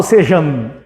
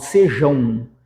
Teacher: Eu não falo sejan eu falo sejão então nós temos um ditongo nasal